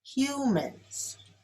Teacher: Humans is stressed on the first syllable.